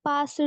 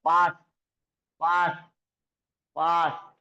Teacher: शेवटच्या ड चा उच्चार इथं ट सारखा होतो.